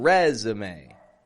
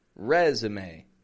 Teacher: We're giving it a strong re, and then z, and then may.